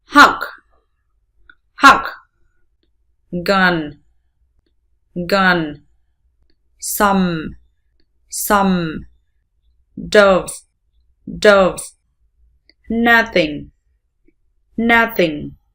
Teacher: Miệng mở 1/2 so với âm A. Đưa lưỡi về phía sau một chút so với phát âm của âm A. Môi và lưỡi thả lỏng. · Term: nguyên âm ngắn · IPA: ʌ